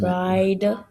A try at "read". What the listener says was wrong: That's a long E sound. So it's